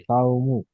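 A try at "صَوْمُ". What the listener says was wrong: জি সৌমু, সাউমু নয়, সাউ বললে সিন এসে যাচ্ছে, সাউ বললে সিন এসে যাচ্ছে, সৌমু।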